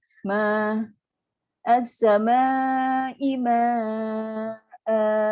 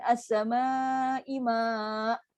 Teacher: Bila kita baca dengan 2 harakat, dia akan berhenti lembut. Ma'a. Itu kan kita kalau sukun, dia akan jadi keras. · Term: mad iwad